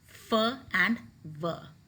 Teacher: the upper teeth softly touch the lower lip so your lower lip is involved and your lower lip touches the upper teeth and the sounds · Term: labiodental